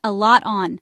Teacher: the T sound in lot can sometimes join smoothly with on if you're talking fast, almost like "a lot on." And then, "on my plate." So all together, I've got a lot on my plate.